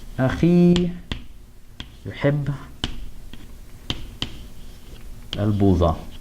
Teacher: The e sound is strong enough that it swallows up the waw.